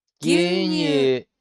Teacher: it's softer and got more of an E sound to the U, as opposed to the OU sound that we're used to